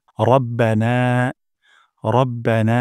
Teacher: র মোটা করে উচ্চারণ করব না